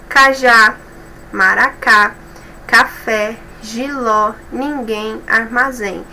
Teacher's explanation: A última sílaba que é a mais forte, a última sílaba que é a tônica. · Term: oxítonas